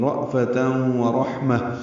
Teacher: پر پڑھیں گے، ہا ساکن پہ ہمس ہوگا، ہا باریک ہے، میم کو تائے مربوطہ سے ملا دیں گے، یہ وقفاً ہا میں تبدیل ہو جائے گی